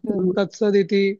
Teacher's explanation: त जेव्हा समोर ई स्वराची संधी होते ना, तेव्हा द होतो